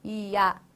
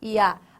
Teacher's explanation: do I para o A, o seu som, ele vai do mais fraco para o mais forte. Ou seja, esse som cresce. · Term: ditongo crescente